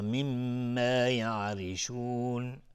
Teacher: میم تشدید دار دو حرکت غنه میدیم